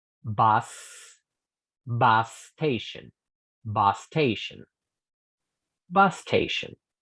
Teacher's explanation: Por lo general, cuando una palabra empieza con el sonido s en inglés, nosotros, en español, los hablantes nativos de español, inconscientemente le agregamos la vocal E antes del sonido S. Y en vez de decir station, decimos station.